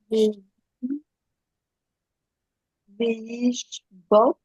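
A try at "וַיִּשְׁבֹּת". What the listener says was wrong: Non, c'est pas V. Va.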